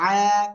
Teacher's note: খাড়া জবর একালিপ টান, আর গলাটা চেপে পড়তে হবে